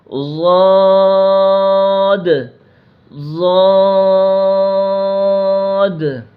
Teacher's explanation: زبان کی کروٹ اور اوپر کی داڑھوں کی جڑ سے ضاد ادا ہوگا، زبان کی کروٹ آپ چیک کریں انگلی لگا کر، زبان کی کروٹ اور اوپر کی داڑھوں کی جڑ سے ضاد ضاد۔